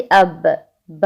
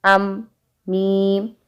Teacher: बा जो होता है वो होंठों के गीले हिस्से से अदा होता है, जो तर हिस्सा होता है, और जो हमारा बाहर वाला थोड़ा सा हिस्सा होता है, जो ड्राई पार्ट होता है होंठों का, वहाँ से मीम अदा होता है